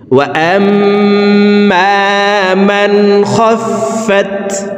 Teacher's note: এই নুন সাকিনকে গুন্নাহ ছাড়া স্পষ্ট করিয়া পড়ব।